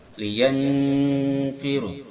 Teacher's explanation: mendekati en, antara en dan eng, dia en. Ini dinamakan dengan ikhfa awsat.